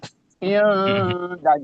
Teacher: istifal sifatnya dal itu tipis